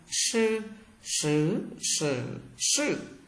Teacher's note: SH các bạn cong lưỡi lại.